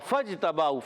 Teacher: فا کو ڈائریکٹ جیم سے ملائیں گے، یہ درمیان میں الف نہیں بڑھیں گی